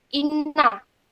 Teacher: huruf nun berharokat tasjid, membacanya dengan mendengung dan ditahan sesaat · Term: gunnah